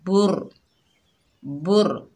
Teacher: बा के ऊपर पेश, आगे रा मुशद्ददा है, बा को रा से मिलाएंगे, रा पुर पड़ी जाएगी